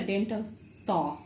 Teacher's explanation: this Ta is a dental Ta. So your tongue comes in between the teeth.